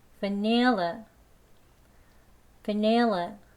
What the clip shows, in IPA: vəˈnɪl.ə